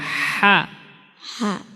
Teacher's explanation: Haknya dari tenggorokan yang tengah, dari lidah dalam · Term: ha kecil